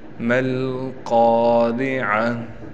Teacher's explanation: گول تا وقف میں ہا بن جاتی ہے